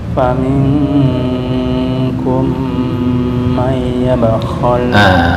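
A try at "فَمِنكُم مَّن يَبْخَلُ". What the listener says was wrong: May yabkhal idgham bi gunnah terus kurang lama. May yabkhal. May sampai masuk ke khayshum atau hidung. May yabkhal, ditutup dulu hidungnya. Bunyi apa enggak? May, kalau bunyi berarti makhraj kurang pas. Nah, itu kurang pas. Harus mati. May. Kalau masih bunyi makhraj itu bi gunnah kurang pas. Tutup. Mati. Nah, itu masih bunyi itu, kurang pas. Belum masuk ke hidung. Kalau masuk ke hidung pasti mati.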